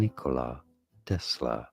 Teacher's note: more of an emphasis on the first syllable of Nikola